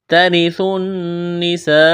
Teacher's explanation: نون مشدد ہے، آواز ناک میں چھپائیں گے، غنہ کریں گے۔ سین میں سیٹی کی آواز پیدا کریں گے، سین کو باریک کرنا ہے، یہ لمبی مد ہے، 4 الف کے برابر کھینچنا ہے۔ · واو اور الف کو نہیں پڑھیں گے، تا کو باریک کرنا ہے، جلدی پڑھیں گے۔